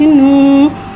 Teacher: वाव साकिन है, वाव साकिन से पहले पेश आ रहा है, वाव मद्दा हो रहा है, लिहाजा वाव मद्दा को एक अलिफ यानी 2 हरकत के बराबर खींच के पढ़ेंगे